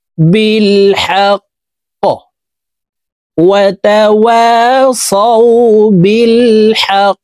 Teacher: কফ যেহেতু কলকলার হরফ উপরের দিকে ধাবিত করে ধাক্কা দিয়ে উচ্চারণ করে পড়তে হবে।